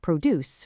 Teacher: The stress is on that first syllable, produce. The verb is produce with the stress at the end.